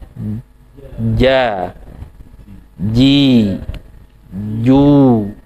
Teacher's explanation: Nah, itu tidak ja, tapi ja, ji, ju ya. Jadi nempel, suara tertahan, udara tertahan, kemudian lepas ja, ji, ju